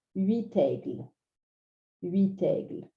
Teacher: When we do a liaison, we just drag that T across. It's still very recognizable.